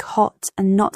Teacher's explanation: have a more open a sound in American English compared to British accents. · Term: Open vowels